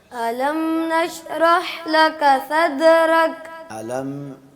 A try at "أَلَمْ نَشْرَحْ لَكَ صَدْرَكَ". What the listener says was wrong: علم پہ غنہ نہیں ہے, علم کو ظاہر کر کے پڑھنا. علم نشرح لك صدرك صدرك